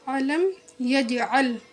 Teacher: یج پر قلقلہ ہوگا کیونکہ قلقلہ کے حرف میں سے جیم ساکین ہے، اس لیے اس پر قلقلہ کر کے پڑھیں گے۔